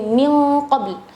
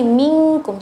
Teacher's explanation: gunnah syadidah artinya gunnah yang agak keras. Nah itu khususnya untuk nun sukun ketemu qaf dengan kaf